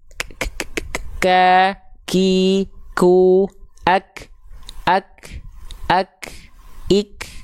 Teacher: Kerasa nggak ada bunyi angin sedikit, dia percikan, bukan berlebihan juga, bukan yang ka, ki, ku, ak, nggak gitu juga. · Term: hams